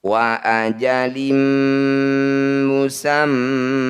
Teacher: bunyi mim harus didengungkan atau ditahan dua ketukan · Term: gunah musyaddadah